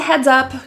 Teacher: It's kind of muddy. The S in heads is voiced like a Z sound.